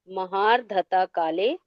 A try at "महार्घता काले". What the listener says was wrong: दीदी, महार घता है, ध नहीं है, घ है।